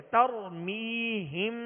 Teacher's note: را ساکن سے پہلے زبر ہے، لہذا را کو پر پڑھیں گے